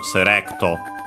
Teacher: Its accent is just like English, so on the re, low, high, and everything else, so serecto. And also the U is barely heard if at all because it's between unvoiced consonants · The L, which becomes Japanese R. Its accent is just like English, so on the re, low, high